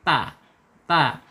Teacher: Ta ini secara makhraj ada di al-lisan, yaitu ujung lidah menyentuh pangkal gigi seri. Ta. Kemudian secara sifat ada di al-hams, at ketika sukun ya.